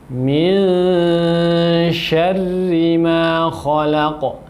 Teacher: Bacalah nun di sini dengan menyamarkannya dan posisi lidah dekat dengan makhrajnya huruf shin, sehingga bunyi dari samarnya huruf nun di sini seperti antara eng dengan en, ya. Jadi bunyinya di tengah-tengah samar itu ada dengung dan bunyinya antara eng dengan en.